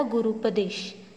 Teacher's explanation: नंतरचा शब्द आहे गुरु आणि उपदेश. तर पहिल्या शब्दातील शेवटचा वर्ण आहे ऱ्हस्व-उ आणि दुसऱ्या शब्दातील पहिला वर्ण देखील ऱ्हस्व-उ आहे आणि त्यांची संधी होऊन भेटतो आपल्याला दीर्घ-उ, म्हणजे दीर्घ स्वर भेटतो आणि शब्द तयार भेटतो आपल्याला गुरुपदेश.